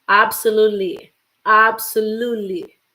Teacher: You see, you don't say much the T.